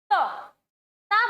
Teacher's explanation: त बोला जाएगा हमारा दंत से